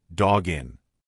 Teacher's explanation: Now, the next link is a little bit easier because we have a hard consonant dog and then a vowel. When you've got that hard consonant followed by a vowel, just push the two together like it's one word.